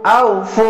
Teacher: আউফু, হামজা অজবর আউ, ফা অপেশ ফু, আউফু, পেশের পাশে অসাকিন 1 আলিফ টেনে পড়বেন